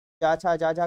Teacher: चा वर्ग आपका तालव्य में आता है